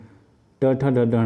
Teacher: मूर्धन्य से होगा ट, ठ, ड, ढ, ण